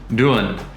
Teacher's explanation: it becomes more just of a 'n' sound